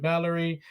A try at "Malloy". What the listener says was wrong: His name is Malloy. Where's the R? Where's the R?